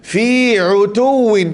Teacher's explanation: Fi utuwin, pastikan ain, mana makhraj ain? Fi wastal halqi, di tengah halqum.